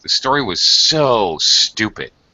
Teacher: notice the dragged out vowel sound and the high pitch and the emphasis